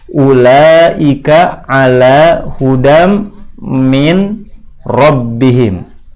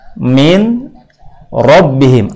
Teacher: Dua huruf digabungkan menjadi satu sehingga yang nampak pada bunyi adalah bunyi satu huruf yang bertasydid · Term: bacaan idgham